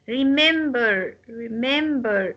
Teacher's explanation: is a verb and it's consists of three syllables but the the second syllable will take the stress